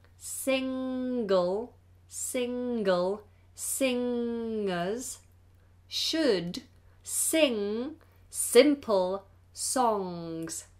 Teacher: the NG sound has to be pronounced with the back of the tongue high and it becomes a nasal